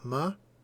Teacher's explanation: the stress is on mother. So you hear how my voice goes up. Mother. The stress is on the ma.